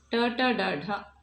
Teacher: ಮೂರ್ಧನ್ಯ ಅಂದರೆ ಅಂಗಳಿನ ಮೇಲ್ಭಾಗಕ್ಕೆ ಬಡಿದು ನಾಲಿಗೆ ಆವಾಗ ಹುಟ್ಟುವಂಥ ಅಕ್ಷರಗಳು.